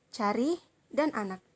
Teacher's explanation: vokal belakang dengan vokal yang rendah serta posisi bibir Itu netral vokal yang diucapkan diucapkan dengan bentuk mulut yang tidak bundar dan tidak pula melebar serta termasuk dalam vokal terbuka seperti kata cari dan anak Lalu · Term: bunyi A